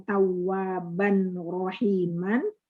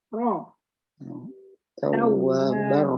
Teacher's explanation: Tebal. Ada dua ro. Dua-duanya harus tebal. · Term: idgham kamil bila gunnah